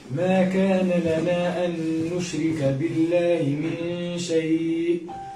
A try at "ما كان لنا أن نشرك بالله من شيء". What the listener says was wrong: ممتاز.